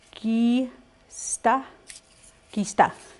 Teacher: you pronounce it non-aspirated, in other words, pronounced without a puff of air, or up in between, or a between sound of K and G. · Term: non-aspirated K